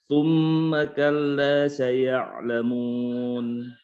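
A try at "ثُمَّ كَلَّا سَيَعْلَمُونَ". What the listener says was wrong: Baik, summa itu ditahan dulu sedikit. Tsumma kalla saya'lamun. La-nya dipanjangin, hadirin, la-nya panjangin.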